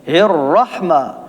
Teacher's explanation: را پر زبر ہے، را کو موٹا پڑھیں گے